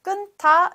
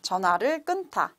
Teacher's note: So when you read loudly or when you pronounce 끊, so we should still keep the first final consonant 니은, and then 타, 끊다. So we still respect the aspiration. So 끊다 is right pronunciation.